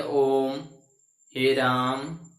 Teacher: प्लुत स्वर यानी कि वैसा स्वर जिनके उच्चारण में तिगुना समय लगता है। ठीक है, तो तिगुना समय जब लगता है तो उन स्वर को हम प्लुत स्वर कहते हैं, और इन्हें त्रिमात्रिक स्वर भी कहते हैं।